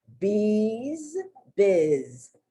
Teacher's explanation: even though one ends in s the letter s and and the other ends in the letter z the truth of the matter is they both end with the z sound